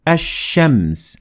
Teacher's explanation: in this type of al, you will drop the lam in al, like what you would do in the word ash-shams. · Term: sun al